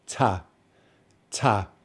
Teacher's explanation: The second syllable is the reduced syllable. So we need to say it in a reduced way.